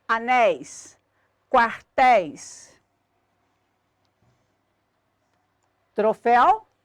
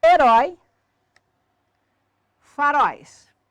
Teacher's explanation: palavras cuja sílaba tônica é sempre a última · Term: oxítonas